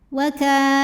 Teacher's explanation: karena ada baris fathah tegak di atas huruf lam cara bacanya panjang dua harakat